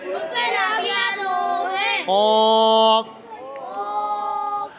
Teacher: قاف زبان کی جڑ اور تالو کے نرم حصے سے ادا ہوتا ہے